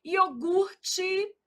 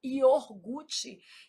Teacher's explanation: a gente às vezes desloca esse R, fala iorgute.